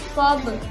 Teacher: termasuk qalqalah kubro ataupun qalqalahnya tuh dipantulkan di akhir kalimat yang jelas.